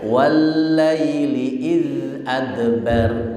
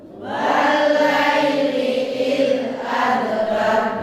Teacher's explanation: Idnya tidak boleh mantul. Idnya mengalir, namanya rokhawah.